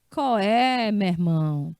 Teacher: E coé é uma aglutinação do som de qual é